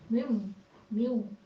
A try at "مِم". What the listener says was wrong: اچھا نہیں، یہ زیر کے ساتھ نہیں بولنا.